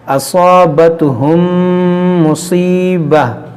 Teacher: میم ساکن کے بعد دوسری میم ہے، یہاں پر ادغام شفوی ہوگا یعنی غنہ کریں گے